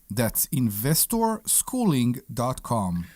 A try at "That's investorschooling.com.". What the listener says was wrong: A little bit, maybe a little bit nasally.